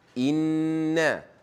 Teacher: Bila anda nampak saja nun sabdu ataupun mim sabdu dengung dan panjang dua harakat